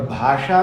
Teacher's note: और भाषा में जो सकार है वो मूर्धन्य शकार है